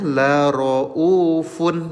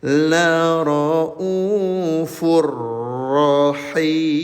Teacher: Soalnya kalau sebelum bertemu dengan huruf ro dibacanya la roufun, betul? Nah, karena sudah bertemu dengan huruf ro bertasydid, maka bunyi tanwinnya dileburkan ke huruf ro. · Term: idgham bila gunah